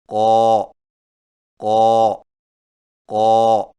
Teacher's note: قاف کی ادائیگی میں زبان کی جڑ کو کوے کے متصل تالو پر لگائیں